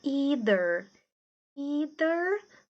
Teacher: esse th é o th com som de D either ou ider americano ou britânico mas o th ainda assim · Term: th voiced